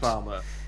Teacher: If we were American, you'd hear the R on the end, but you can't because New Zealand is a non-rhotic dialect, and we don't pronounce the letter R unless it's immediately followed by a vowel sound